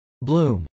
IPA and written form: blˈum (bloom)